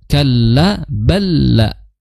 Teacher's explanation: Dit tasdid lihat kalla balla ya. Di situ lam sukun bertemu lam ya. Itu tasdid maka langsung idgham · Kalla balla, ya, di situ tasdid, lihat, kalla balla, ya, di situ lam sukun bertemu lam, ya, itu tasdid, maka langsung idgham, ya, idgham mutamathilain, ya, langsung masuk idgham sempurna, idgham kamil bila gunnah, Idgham kamil bila gunnah, karena lam sukun bertemu lam berharokat, maka di situ ditandai dengan tasdid. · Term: idgham kamil bila gunah